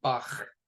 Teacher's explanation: chaf is the guttural back of the throat loogie sound